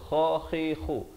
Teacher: kha di hujung kerongkong, kha khi khu